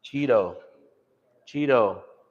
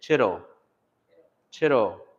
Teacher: And so it's the relaxing of the tongue, and they flip the T to make it sound like a D in order to say it faster